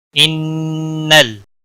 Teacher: نون مشدد پر گنہ ہوگا، نون مشدد اور میم مشدد جہاں پر بھی ہوں گے ان پر گنہ ہوتا ہے.